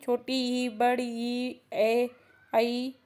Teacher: ये आपकी जीवा के अग्र वाले भाग से निकलते हैं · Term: अग्र स्वर